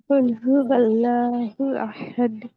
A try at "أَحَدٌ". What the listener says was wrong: احد نہیں، آ کی آواز نکالیے، احد، پہلے آ کی آواز نکلے گی، دیکھیے پہلے ہمیں ساؤنڈ نکالنا ہے، احد، احد، احد،